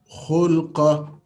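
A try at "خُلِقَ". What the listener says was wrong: khulika. Not khulika. It's a kasra here. Lam has got kasra.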